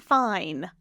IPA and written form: faɪn (Fin)